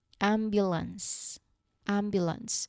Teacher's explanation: There's no T sound at the end.